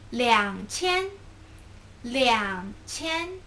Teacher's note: 两 is third tone, 千 is first tone.